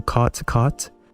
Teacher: I pronounce both of them as caught.